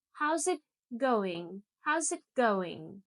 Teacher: We don't say, how is it going? Native speakers always say it quickly, so it sounds more like, how's it going? How's it going? The it almost disappears. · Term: link the words